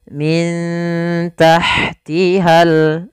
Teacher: nun sukun bertemu dengan huruf ta sebagaimana tadi kasratain bertemu huruf Ta Maka cara membacanya disamarkan kepada huruf ta-nya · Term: bacaan Ikhfa, ikhfa